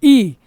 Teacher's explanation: तालु से बोलते हैं ई